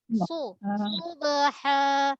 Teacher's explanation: Makhraj dia ujung lidah belakang pangkal gigi bawah. Ada sifat tunggal dekat sad iaitu sofir.